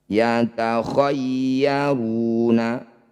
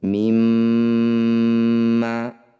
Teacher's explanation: Setiap ada mim atau nun yang bertanda tasydid disebut bacaan gunnah musyaddadah. Cara bacanya bunyi mim dengungkan tahan 2 ketukan.